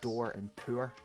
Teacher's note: for me as a Scottish person or a northern accent, door and poor don't rhyme. However, a posh English accent, or what we consider what we call received pronunciation, would rhyme.